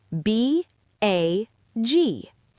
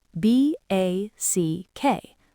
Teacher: Voiced consonants stretch the vowel out. Unvoiced consonants cut the vowel short.